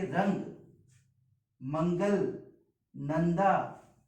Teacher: जो मुख से निकलने वाली जो वायु है वह आपके नासिका से बाहर आती है · तो जब आप अनुस्वार व्यंजनों का उच्चारण करते हैं या अनुस्वार वर्णों का उच्चारण करते हैं, तब वायु जो है, जब आप वर्ण को बोलते हैं तो जो मुख से निकलने वाली जो वायु है वो आपके नासिका से बाहर आती है। नासिका का मतलब होता है नाक से।